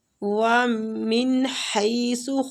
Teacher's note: نون ساکنہ کا ہم اظہار کر رہے ہیں، آگے ہلکی حروف ہے ، اظہار ہلکی ہوگا، خرجت خا کو پور پڑھیں گے، را